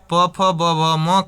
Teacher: प का उच्चारण स्थान अगर पूरे प वर्ग की बात करें प म का तो यह आपका कहां से बोला जाता है? ओष्ठ से बोला जाता है।